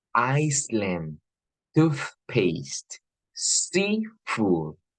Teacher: You have two nouns, you are winding them to create just one word, and the first syllable is stressed, not the second one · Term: compound noun